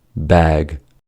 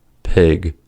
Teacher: The vowel length is the key. The vowel sound is longer with the voiced ga than with the voiceless ka.